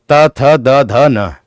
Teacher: जीभ का अग्रभाग हमारे ऊपर के दांतों से स्पर्श होता है, उसे दंतीय व्यंजन कहते हैं।